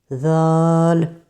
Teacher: ذال زبان کی نوک ثنایا علیٰ کے کناروں سے تھوڑی سی باہر کی طرف اٹھانی ہے، لگانی نہیں ہے